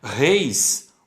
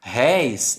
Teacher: Reis, o E e o I é ditongo fechado. Réis é ditongo aberto.